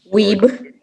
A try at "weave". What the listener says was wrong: Weave with a V.